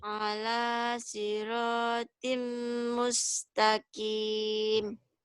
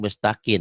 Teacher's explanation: Itu lupa nutup mulut. Jadi bunyinya jadi N.